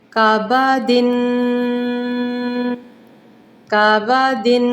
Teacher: 2 second تک آپ نے تنوین کو ناک میں بھنبھناہٹ کرنی ہے۔ کعبہ دن، اور کاف کو سادہ پڑھیے گا، موٹا نہ کیجیے گا۔ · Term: غنّے کے ساتھ